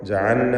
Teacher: ജഅൽന സാക്കിന ലാമിനെ ഇൽഹാർ ചെയ്ത് ഉച്ചരിക്കണം. ജഅൽന എന്നായി പോകരുത്.